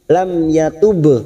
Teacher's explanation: mim sukun bertemu ya dibaca jelas idhar safawi. Lam yatub, ba sukun qalqalah sugro karena mati asli di tengah kalimat, jangan lupa dipantulkan tub.